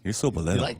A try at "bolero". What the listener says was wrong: No, and you're not pronouncing it right. You almost have to say it with disgust. You almost get, oh, you're so bolero. You've got to throw the angry Spanish sound in between that.